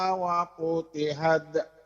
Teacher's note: Wa futihat, ada terdengar sedikit decitan mahmusnya.